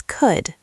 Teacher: A common mistake is pronouncing the L sound, but there is no L sound. It's could, not cold.